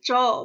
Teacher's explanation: तालु में च बोला तो तालु में जीभ छू रही है